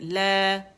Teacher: لا کو کھینچ رہا ہے نا, مد کی بلندی فیل ہو رہی ہے